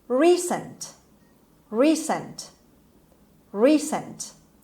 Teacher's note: The stress is on the first syllable on re sound, on R. Done, made, or occurring not long ago. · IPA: /ˈriːsənt/